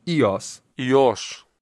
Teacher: the modern Greek way of pronouncing it would be with a bit of a step up on the second syllable